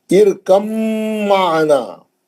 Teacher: آخری مثال، یہ مثال ایسی ہے جس میں تقریباً لوگ غلطی کرتے ہیں، کیسی ہے، ارکم معنا، با ساکن کا میم مشدد میں ادغام میں متجانسین ہو گیا۔ اب با نہیں پڑھیں گے کیونکہ با بھی شفی ہے، میم بھی شفی ہے، با ساکن کے بعد میم آئیں گا تو آپ سیدھا میم میں چلے جائیں گے، با نہیں پڑھیں گے۔ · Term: ادغام متجانسین